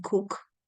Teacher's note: The final sound in cook is K, and it is unvoiced.